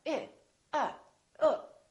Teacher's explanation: I say uh there's not much happening in my mouth uh my lips are relaxed and my tongue is relaxed in the back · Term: neutral